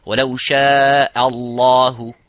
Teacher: Similarly, the last example, وَلَوْ شَاءَ اللَّهُ, and ha, both of these letters, this hamza and the ha, have to be muraqqaq, which is empty mouth. So only the lafzul jalala have to be full mouth. وَلَوْ شَاءَ, not وَلَوْ شَاءَ Allah, وَلَوْ شَاءَ اللَّهُ.